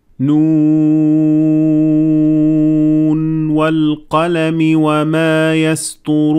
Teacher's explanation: you will not merge between noon at the end of the word noon and the waw that comes afterwards. So there is no idgham.